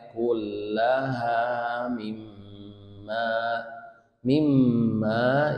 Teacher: itu ada mim bertasydid, hukumnya gunnah, harus ditahan, mimma ditahan. Boleh sampai 4 harokat ya, boleh sampai 4 harokat.